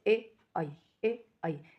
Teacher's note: इसमें हमारी जो जिह्वा है वो तालु को भी टच कर रही है हल्का सा, और कंठ से भी साउंड निकल रही है, इसलिए इनका उच्चारण स्थान कंठ भी है और तालु भी है।